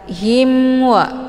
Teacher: Hukum bacaan izhar syafawi jelas tiada berdengung. · mimnya dibunyikan secara jelas atau jelas bunyi M-nya. Cukup ditekan saja, tidak perlu ditahan.